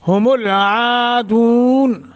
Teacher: عین کے آگے الف ہے، ایک الف کے برابر مد کریں گے. دون مد عارض، طول توسط قصر تینوں کر سکتے ہیں.